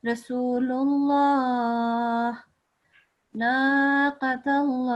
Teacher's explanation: the Lamul Jalala is the lam that will be pronounced thick because of the vowel or the stroke that comes beforehand. If it's a stroke on top of the letter, like here and like here, it's on top of the letter and that one as well, then this lam will be pronounced in a thick way.